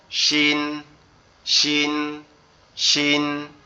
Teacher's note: শিন অক্ষরটা আমাদের জিহ্বার মধ্যখান উপরের তালুর সঙ্গে লাগবে, আর এই জিহ্বার মধ্যখানকে যদি আমরা উপরের তালুর সঙ্গে লাগাইতে চাই তাহলে আমাদেরকে কি করতে হবে, গালের 2 সাইডের দাঁতের অংশটা কি চেপে রাখতে হবে, দেখে বলতে হবে শিন, শিন, শিন, ঠিক আছে, এভাবে বলতে হবে।